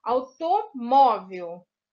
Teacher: A sílaba mais forte, a tônica, é a penúltima, então é paroxítona.